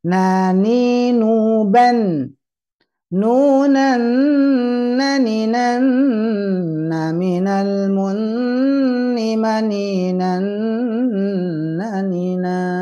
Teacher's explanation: Bahasa kita sebenarnya ya, hanya saja bertegas, oh iya ternyata letaknya itu adalah di ujung lidah menyentuh ujung langit-langit disertai masuk ke hidung